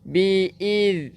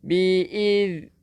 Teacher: Hujung lidah keluarkan sikit untuk zal.